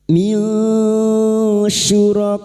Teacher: Nun sukun bertemu shin, ikfa hakiki. Nun sukun dibaca samar dan mendengung selama 3 harakat.